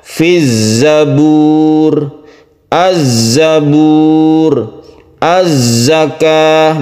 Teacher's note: huruf yang keluar dengan bunyi berdesir dan kuat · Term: shofir